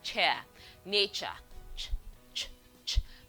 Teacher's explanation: this is a voiceless affricate made with the tip of the tongue on the alveolar ridge